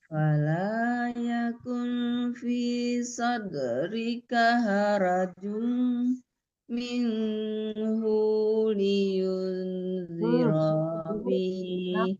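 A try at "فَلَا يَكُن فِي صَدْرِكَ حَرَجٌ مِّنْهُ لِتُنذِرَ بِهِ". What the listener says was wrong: Bu, jangan liun tapi litun. Litun, huni juga nggak boleh tertahan ya. Harajum minhu litunzira bihi.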